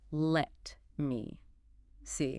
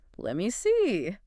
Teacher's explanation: That T at the end of let kind of disappears into the M sound of me, and it almost becomes one word.